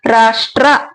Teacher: ಶ ಗೆ ಟ ಮತ್ತೆ ರ ಜೊತೆಯಾಗಿ ಬಂದಿದೆ ಹಾಗಾಗಿ ಏನ ಹೇಳಬೇಕು ಜೊತೆಯಾಗಿ ಹೇಳಬೇಕಾಗುತ್ತೆ ಬೇಗ ಹೇಳಬೇಕಾಗುತ್ತೆ ಒತ್ತಕ್ಷರಗಳನ್ನ ಸ್ಟ್ರ ಅಂತ ಹೇಳಬೇಕಾಗುತ್ತೆ ಶಟ ರ ಷ್ಟ್ರ ಅಂತ ಹೇಳಬೇಕು ರಾಷ್ಟ್ರ ಅಕ್ಷರ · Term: ವಿಜಾತಿ ಒತ್ತಕ್ಷರಗಳು